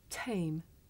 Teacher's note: we say the sound at the beginning of the word tame with a big puff of air